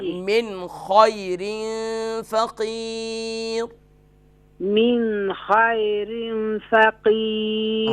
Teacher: من پہ نون ساکن پر غنہ نہیں ہوگا کیونکہ یہاں پر نون ساکن کے بعد حروف حلقی ہے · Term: اظہار